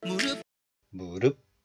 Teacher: So it is pronounced as rup, not rup, just rup. Close the syllable like a glottal stop. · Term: syllable closure